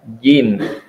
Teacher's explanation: Huruf jim ini adalah lidah bagian tengah ditempelkan dengan langit-langit yang lurus di atasnya.